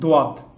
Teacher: জিহবার পার্শ্বভাগ ও উপরের পাটির দাঁতের মারি এই দুই অংশের সংযোগস্থল থেকে উচ্চারিত হয়